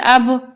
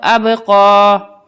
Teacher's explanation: حمزہ با زبر اب یہاں پہ بھی با میں ہماری آواز پلٹ کر آئے گی کیونکہ با بھی حروف قلقلہ کا حرف ہے